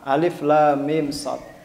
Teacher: Alif, lam, panjang. Lam itu belakangnya ada mim mati. Ketika bertemu mim itu idgham mimi. Didengungkan berapa harokat? 2 harokat. Ya, sehingga ditekan dulu bacanya.